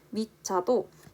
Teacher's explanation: 받침 디귿으로 인해 뒤에가 지읒이 아닌 쌍지읒으로 발음이 나고 있죠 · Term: 된소리